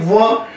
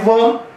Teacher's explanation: व बोलते समय दांत और होंठ दोनों आपस में स्पर्श हो रहे हैं। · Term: दंते जमा ओष्ठ